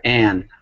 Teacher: when we say and, you're actually making the A sound go through your nose because of that N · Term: nasal